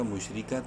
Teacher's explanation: خیرم، میم شین پیش مش، را زیری باریک پڑھیں گے را کو زیر کی وجہ سے